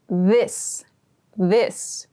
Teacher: your tongue is between your teeth and your vocal cords vibrate when you make this th sound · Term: voiced th sound